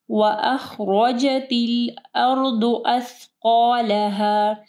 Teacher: ضاد کو ہیوی پڑھنا ہے، را بھی ہیوی پڑھی جائے گی